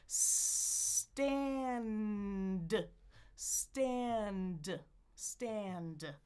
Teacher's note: Back up to the ridge for the n and the d. · The more you do this, the easier it gets. Friction with the S, then explode the T right on the bump